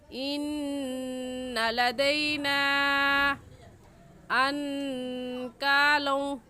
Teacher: تو اگر حروف مدہ کے بعد حمزہ اگلے کلمے میں آ جائے تو وہاں پر جو مد ہوگی اس مد کا نام ہوگا مد منفصل اور مد جائز، اور اس مد کو ہم 3 الف کے برابر کھینچیں گے، اس سے کم یا اس سے زیادہ نہیں کھینچیں گے۔ ایسے پڑھیں گے ان لدینا انکالوں، ان کے نون ساکن پر ہم غنہ کریں گے کیونکہ نون ساکن کے بعد حروف حلقی جو کہ 6 ہیں، حمزہ ہا، عین ہا، غین خا، ان میں سے کوئی لفظ بھی نہیں آیا، اس لیے اس نون ساکن پر ہم غنہ کریں گے۔